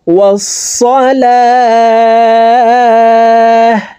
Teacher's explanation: গোলতা ওয়াকফের ক্ষেত্রে হার উচ্চারণ করব এবং হাকে সাকিন করে ফেলবো